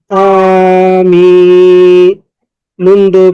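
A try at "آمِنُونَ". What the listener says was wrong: নুন দুই পেশ নুন, একটু টান হয়েছিল, নুন দুই পেশ নুন।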